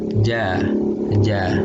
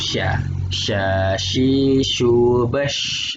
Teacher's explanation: Ini lidah bagian tengah tuh agak naik dikit, bagian tengahnya.